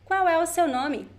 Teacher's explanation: So the qual, the L, sounds like U, sounds like a very weak U.